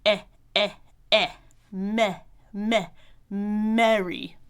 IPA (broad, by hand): ɛ ɛ ɛ mɛ mɛ mɛri